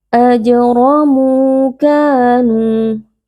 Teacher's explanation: Ka dibaca panjang 2 harokat karena ada alif yang sebelumnya berharokat fathah, hukumnya adalah mad tabi'i.